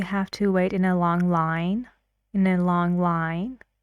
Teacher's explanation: in a long line his voice goes up